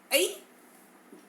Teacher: ऐ, अ और ई से मिलकर बनता है, यह एक संयुक्त स्वर है।